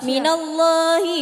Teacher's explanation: Lafaz Allah tafkhin. Kalau kenapa? Karena lafaz Allah didahului harakat fathah.